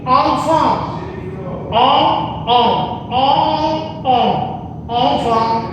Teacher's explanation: La EN suena abierta pero nasal.